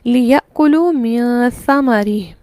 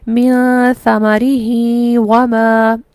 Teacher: وقف کی صورت میں ہا کو نہیں کھینچا جائے گا اور مد صلہ صغریٰ نہیں ہوگی